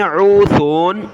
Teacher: عین کو گلے سے نکالیں اور سا پر زبان نکالنی ہے